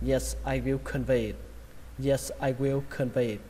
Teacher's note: Nó trọng âm của nó rơi vào âm thứ hai, âm V. Âm đầu tiên đọc là khờn, khờn vây, khờn vây, khờn vây.